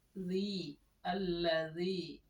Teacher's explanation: Mat tabi'i, Panjangnya hanya 2 harakat saja. Jadi jangan terlalu panjang ya. 1 tarekan saja.